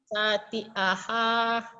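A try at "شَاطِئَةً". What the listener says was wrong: Jangan ada hahnya, Bu. Syati'aha.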